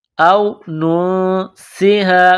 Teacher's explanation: بعد سین ہے، سین میں سیٹی کی آواز پیدا کریں گے، نون ساکن پر غنہ کریں گے، آواز ناک میں چھپائیں گے